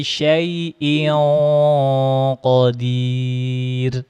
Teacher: langsung naikkan pangkal lidahnya kan dia huruf qof, huruf tebal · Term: huruf qaf